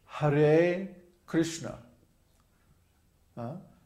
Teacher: the har is long and then Krishna are both short